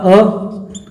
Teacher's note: तो जब हम किसका उच्चारण करेंगे, पहले तो अवृत्तामुखी का कर लेते हैं, जहां पर होठों की स्थिति गोल नहीं हो रही है